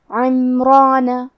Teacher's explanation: کلمت عمرانہ میں حرف الراء کو اور اس کے بعد مد الف کو دونوں کو تفخیم سے ادا کریں گے